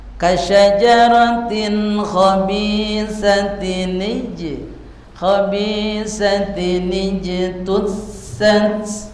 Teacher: Jadi tanwin kata lain adalah sukun tanwin itu juga sukun. Maka ketemu antara tanwin dengan sukun, maka ini harus ada nun wasol. Dibacanya kasroh. Lihat. Berarti bacanya asalnya khobisatin jim sukun tusat.